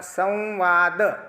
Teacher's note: त्यात स दाताशिवाय उच्चारता येत नाही, व दाताशिवाय उच्चारता येत नाही आणि द ही दाताशिवाय उच्चारता येत नाही. म्हणजे संवाद हा जो शब्द आहे हा शब्द उच्चारताना तिन्ही दंत्यवर्ण आहेत आणि त्या दंत्यवर्ण असलेल्याच शब्दाचा उच्चार माऊलींनी दाताचं वर्णन करण्याकरता घेतला.